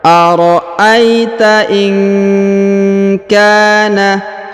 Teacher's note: huruf nun sukun bertemu huruf ka, maka kita dengungkan dan kita samarkan.